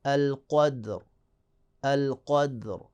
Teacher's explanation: را ساکن مقبل دال ساکن اور اس سے پہلے قاف پہ زبر ہے تو را کو موٹا پڑھیں گے